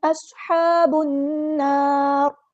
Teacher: صاد کی سیٹی کو واضح کرنا ہے، ہا کو مستحلق یعنی مڈل تھروٹ سے ادا کرنا ہے ، اور صاد ہمارا یہاں پہ ہیوی لیٹر ہے، پورا ادا